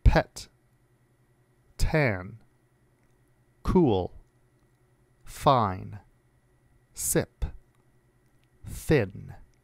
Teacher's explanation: The following words all begin with voiceless sounds.